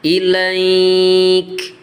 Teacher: Ini kalau berhenti namanya mad lain. Ilaik jadi panjang. Kalau langsung ilaika ini namanya len ya, huruf len.